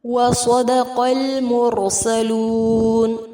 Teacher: وَصَدَقَ الْمُرْسَلُونَ، صاد اور قاف کو پر کیا جائے گا، آگے لام لام قمریہ ہے، را مخفم ہوگا اور مد عارض کے ساتھ وقف کریں گے